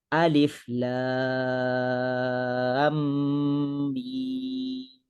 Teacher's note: apabila kita nak memasukkan mim yang pertama yang nak diidghamkan ke dalam mim yang kedua ni, kita akan tinggikan sedikit suara. Lam, lam. Baru kita masukkan dengung dan juga mim dengan kadar 6 harakat. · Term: mad lazim harfi musaqqal